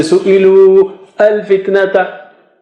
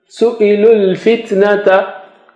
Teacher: So here also, you know, so many words are in so many letters are in between which do not have any sign, so no sign, no sound, just jump from lam to lam